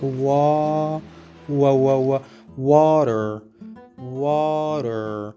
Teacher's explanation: So we changed that T into a D, a soft D, because it is surrounded by 2 vowel sounds